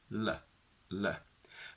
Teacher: For the clear L sound, we said that your tongue and tongue tip basically need to be straight against the alveolar ridge. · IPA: /l/